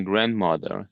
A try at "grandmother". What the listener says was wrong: I think it's the th in grandmother. You you've got the sound there, but it sounds a little bit too strong, I would say.